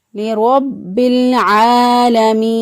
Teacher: با مشدد پر مضبوطی اور قوت کے ساتھ با کو ادا کریں گے